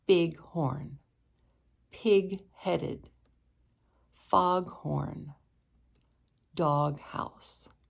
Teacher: And if the first word ends in a G, like big, and the second word starts in an H, like horn, we end up with the word bighorn, like in bighorn sheep. And in these compound words, both the G and the H are pronounced.